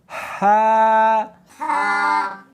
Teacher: ہا، ہا نہیں پڑھنی بلکہ اس کو حلق میں سے نکالنا ہے، سینے میں سے نہیں نکالنا